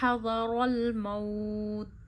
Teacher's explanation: वक्फ आने की वजह से हमने वाउ लीन को ज़्यादा खींचा है